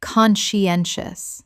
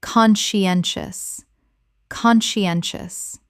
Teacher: Four syllables with the stress on the third